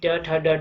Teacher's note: तो कठोर तालु से कहा जाता है तब च छ ज झ ये सभी वर्ण का उच्चारण किया जाता है। अगर मूर्धन्य की बात करें तो कठोर तालु के अगले भाग से जब उच्चारण किया जाता है, जैसे कि ट ठ ड ढ है